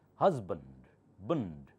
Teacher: Here the S sounds like Z.